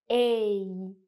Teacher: For the sound A, it's a little bit trickier. It's what we call a diphthong. So it's actually two vowel sounds combined. A. So as you can see, your mouth moves and your tongue goes up a little as you produce the sound. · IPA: /eɪ/